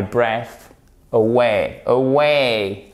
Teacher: ici vous avez l'accent tonique sur la seconde syllabe